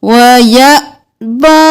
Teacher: حمزہ پر جزم ہے تو جھٹکا دیں گے